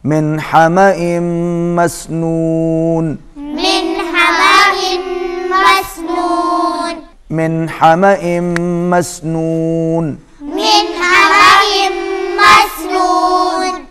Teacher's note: یہاں پر اظہار ہوگا، نون ساکن کے بعد حروف حلقی میں سے آ رہا ہے ہا، اظہار ہوگا